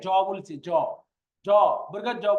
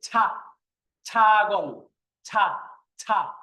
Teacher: মুখ থেকে একটু চাপ দিয়ে বেশি বাতাস বের করতে হবে। যেমন আমি এর আগে জ বলছি, জ জ জ বললে দেখেন হালকা ভাবে জ জ এরকম ভাবে আসছে, কিন্তু এইটাকে বললে বলতে হবে ছ।